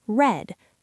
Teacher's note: Another difficult sound is the R sound. In English, the tongue is pulled back slightly and the tip of the tongue does not touch the teeth.